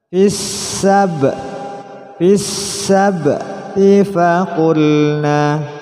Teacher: ba huruf qalqalah dipantulkan. Fis sabti faqulna, tidak boleh dibaca fis sabti, tapi harus memantul.